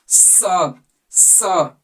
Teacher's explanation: इस स का जब उच्चारण करेंगे तो आपका जीभ दांत के पास जाना चाहिए। दांत में सटा होना चाहिए।